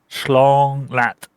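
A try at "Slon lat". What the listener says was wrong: Close. You keep saying schlong. Yeah, you keep saying schlong. Slon. S and lawn. Okay, you know lawn like a lawn mower?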